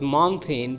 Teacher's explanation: when a T is before an N, carefully listen, T is before an N, the sound T is stopped, turns into head N like nin, like the final N should be strong.